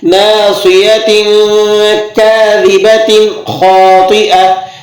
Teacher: ناصیۃ پہ آپ غنہ کریں گے، تا جو زیر تن ہے یہاں پر غنہ ہوگا، لیکن کاذبۃ پہ آپ غنہ نہیں کریں گے